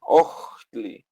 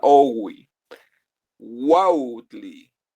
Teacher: H antes de consonante es como aspirada, ojtli, y H antes de vocal es una profunda owi, wautli.